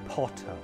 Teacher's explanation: In British English, we don't pronounce the r like Americans do, and therefore replace the r sound at the end of words like potter with a simple schwa, potter. However, if the next word begins with a vowel sound, we do pronounce the r It intrudes into the two words.